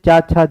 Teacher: चा छा जा जो हमारा चा वर्ग है वो कहाँ से उच्चारण होता है? उसका तालु से होता है।